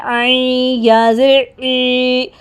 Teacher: عین کو ہم نے مڈل تھروٹ سے ادا کرنا ہے